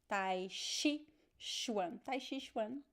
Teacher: we don't pronounce ch. We pronounce sh.